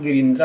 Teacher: यही गिरि जोर इंद्र, यहाँ गिरिंद्र हुआ, यहाँ ह्रस्व ई और ह्रस्व ई मिलकर दीर्घ ई हो गया।